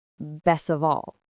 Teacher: It sounds like best of all. The T is gone.